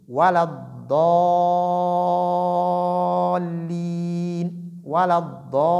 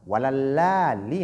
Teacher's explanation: La lettre dad est différente de lam, malgré que leurs points d'articulation sont très proches. Voilà, sont très proches parce que la lettre lam sort du adnal hafa.